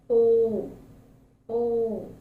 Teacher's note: when O is articulated, the mouth is in fully open position and the lips are rounded, as in O, O.